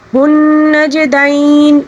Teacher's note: جیم کے اوپر یہاں پر ساکن ہے، اس کو قلقلے کے ساتھ پڑھیں گے